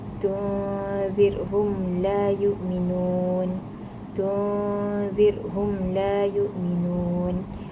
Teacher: wajib diizharkan atau diperjelaskan mim sakinah daripada makhrajnya tanpa dibaca dengung · dinamakan syafawi kerana pertimbangan makhraj huruf mim yang dikeluarkan dari dua bibir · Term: izhar syafawi